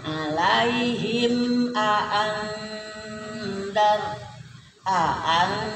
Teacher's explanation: Idhar syafawi, dibaca jelas ya, tegas, tidak boleh dengung.